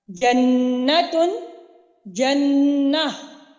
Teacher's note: आखिरी गोलता हा में कन्वर्ट होकर आपने अदायगी करते वक्त, यानी कि वक्फ की अदायगी करनी है जब, तो आपने हा की आवाज अदा करना है। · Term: हाय साकिना